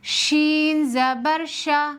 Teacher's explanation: شین میں بھی حروف مستفیلہ کی صفت ہے، اس کو باریک پڑھیں گے، جیسے شین زبر شا۔